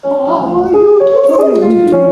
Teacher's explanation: Make the ow not a diphthong. Ha, and then wa.